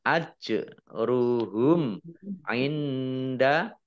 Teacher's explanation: mim sukun bertemu dengan huruf ain, bacaan izhar safawi dibaca jelas.